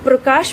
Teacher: प जो है वह एक झटके में बोला जा रहा है, बहुत ही तीव्र गति के साथ